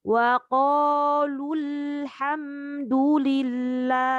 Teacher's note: untuk lam sukunnya supaya dia tidak memantul, dialirkan dulu coba